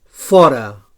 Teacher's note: So labiodental fricatiu sord.